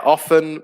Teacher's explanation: where the t is silent